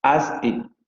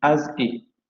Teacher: Has he se va a transformar en as he, justamente porque se caen las consonantes iniciales glotales